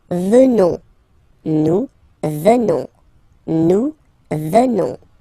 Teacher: ONS, remember, classic ending for nous at the present form. Final S not pronounced, so you will get the sound venons.